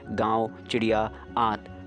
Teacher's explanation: अनुनासिक के उच्चारण में नाक से बहुत कम सांस निकलती है और मुंह से अधिक।